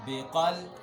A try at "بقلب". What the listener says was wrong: اور موٹا کرو بھائی قول